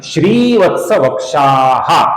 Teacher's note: सही उच्चारण है श्रीवत्स वक्षाः, श्री का दीर्घ उच्चारण और क्षा के आगे विसर्ग